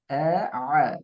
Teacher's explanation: அ என்று செல்ல நேரம் நாவு நாவினுடைய எந்த ஒரு பகுதியும் தூக்குபடுதில்லை தொண்டையை நோக்கி